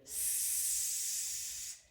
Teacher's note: звук приголосний с тягнемо довго